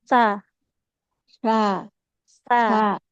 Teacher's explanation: huruf sa coba ibu ujung lidahnya tempelkan ke ujung gigi seri atas.